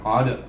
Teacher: Lailatul, kemudian di sini qaf baris atas qa, kemudian bertemu dengan dal mati, baca dengan qalqalah sughra